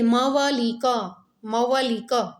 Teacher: ઘણીવાર ઉ નો પણ શું બોલાય છે તો કે વ સંભળાય છે